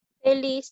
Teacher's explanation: Feliz lleva la mayor fuerza de voz en la sílaba lis. Esta aguda está terminando en Z.